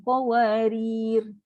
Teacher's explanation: So ra tu akan disukunkan, qawarir. Ra tu ra tarkik.